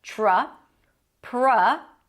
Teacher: The TR together turns into a ch sound